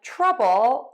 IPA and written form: ˈtrʌbəl (trouble)